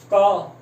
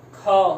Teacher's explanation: अल्प प्राण मतलब जब आप बोलोगे ना तो कम आवाज, मतलब कम हवा निकलेगी।